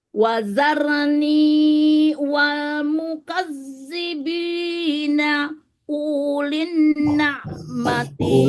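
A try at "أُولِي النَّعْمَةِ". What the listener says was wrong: Ulin, itu jangan panjang.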